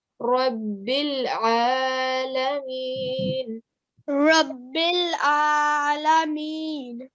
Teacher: And the same thing with the ayn. It's also coming from the middle of the throat